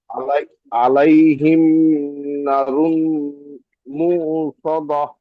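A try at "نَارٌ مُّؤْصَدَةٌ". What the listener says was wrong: নারুম মুসাদা, নুন আলিফ জাবার না, টান হবে একটু।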